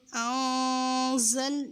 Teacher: حمزہ نون زبر ان، زا زبر زا، یہاں زا آ رہی ہے نون ساکن کے بعد، تو یہاں پر ہم اخفا کریں گے، نون کی آواز کو بس چھپائیں گے